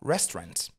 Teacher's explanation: Mais si vous voulez prononcer avec un anglais américain et beaucoup plus naturel en contexte, vous allez même dire restaurant tout court. Donc on va retirer carrément cette syllabe to